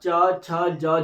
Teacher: जब भी आप च छ ज झ बोलोगे, तो दांत के पीछे जो तालु वाला भाग है, वहां पर आपकी जीभ टच होगी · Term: तालव्य वर्ण